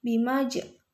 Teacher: terdapat hukum bacaan Qolqolah Sugro cara bacanya dipantulkan